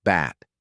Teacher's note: Same as P, but add voice. Touch your throat. It should vibrate.